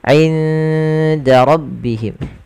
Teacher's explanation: Ikhfa'nya samarkan nunnya ke huruf dal. Awalnya inda, tapi dia ketika ketemu dal inda langsung ke huruf dalnya.